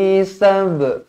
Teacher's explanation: Qalqalah Sugra dibaca melantun